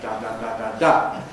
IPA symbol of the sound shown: d(a)